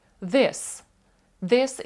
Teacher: у нас язик ставиться між зубами знову і вимовляється як з д